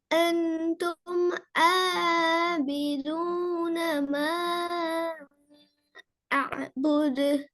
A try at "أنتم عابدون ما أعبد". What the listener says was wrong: இதுல ஒரே ஒரு இடம் மட்டும் பிரச்சனை ஆபிதூன அந்த ஆ இன்னும் இந்த டிஃபரெண்ட் வருதா எஸ் ஆண்டு செல்ல நேரம் எங்கட தோட் மஸ்ட் என்ன செய்யணும் எங்கட தோட் என்ன செய்யணும் மூவ் ஆகணும் எங்க மூவ் ஆகணும் டவுனா அப்பா டவுன் தொண்டையை கீழுக்கு தூக்கினா ஆண்டு வருமா சொல்லி பாருங்க எங்கட தோட்ல நடக்குது எஸ் எங்கட டங் தொண்டையால் உண்மையில எங்கட தோட் அல்ல எங்கட டங் நாக்கு வந்து தொண்டையோடு வார நாக்கு பகுதி தொண்டையோடு வார அந்த டீப் சைடு என்ன செய்யணும்